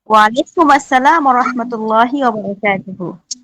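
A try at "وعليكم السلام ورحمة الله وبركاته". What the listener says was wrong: দুহু বলছিলাম আমি নাকি তুহু বলছিলাম? আমি কি বলি সেটা একটু লক্ষ্য রাখবেন। ওয়াবারাকাতুহু, এখানে সাকিন করছি, আপনারা তুহু বলছেন, তুহু নাই, ওয়াবারাকাতুহু।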